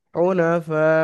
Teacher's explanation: আর এবং মাত্রা মোটা আকৃতিতে দেয়া রয়েছে। হুনাফা, এখানে 3 থেকে 4 আলিফ পরিমাণ টান দিয়ে পড়তে হবে যেহেতু মধ্যে মুত্তাসিল। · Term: মাদ্দে মুত্তাসিল